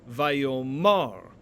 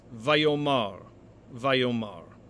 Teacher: when the stress shifts to the ultimate syllable or the final syllable the original a returns